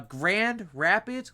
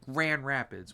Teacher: Grand Rapids we just say Grand Rapids we forget the D